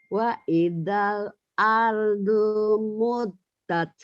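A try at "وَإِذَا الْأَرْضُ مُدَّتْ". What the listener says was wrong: Ibu bacanya wa idal ardu muddat. Emang dunya panjang Bu? Panjang enggak? Panjang ya? Ini ini ada pemanjangnya ya? Nih, panjang enggak Bu? Udah ya, tapi Ibu kayak ketahan tadi. agak panjang gitu loh Bu.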